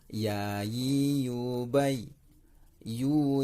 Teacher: Makhraj huruf ya yaitu adalah tengah lidah mengenai langit-langit di atas.